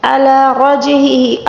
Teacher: جیم کے اوپر ساکن آ جائے تو اس کو قلقلے کے ساتھ پڑھنا ہوگا، یہاں پر قلقلے کا قاعدہ ہے۔